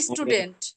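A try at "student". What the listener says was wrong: না না স্টু না, টিউ স্টুডেন্ট।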